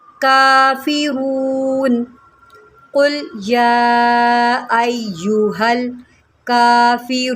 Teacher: کاف کے اوپر کھڑا زبر ہے، اس کو 1 سیکنڈ کھینچ کے پڑھیں